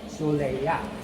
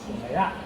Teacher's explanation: So the stress is at the end.